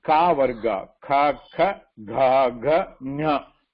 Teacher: ka varga, ha and visarga are pronounced from the throat · All of them has got the origin from the throat. Okay, and that is why they are called guttural.